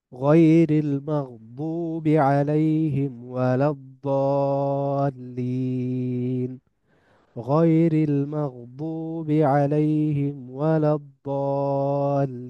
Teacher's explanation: এখান থেকে আসতেছে দ্বিতীয় কথা, যে দাদ এবং দালের পার্থক্যের মধ্যে একটা পার্থক্য হচ্ছে যে দাদ অনেক হেভি, মোটা করে উচ্চারণ করতে হয়, যেটাকে আমরা একটু আগে বলছিলাম যে আরবিতে বলা হয় তাফখিম।